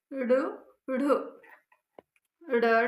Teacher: जिनके उच्चारण में जीहवा की नोक झटके से नीचे गिरती हो वो उत्क्षिप्त व्यंजन कहलाते हैं।